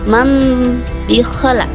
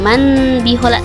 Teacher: nun matinya enggak terdengar juga ya, karena nun mati seakan-akan berubah menjadi mim bunyinya, bukan manbihola jadi mambikhola. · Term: hukum iqlab